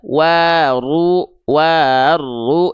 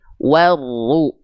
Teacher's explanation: Jadi langsung diidgomkan, dimasukkan, dileburkan ke huruf ro gitu. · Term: idgham syamsi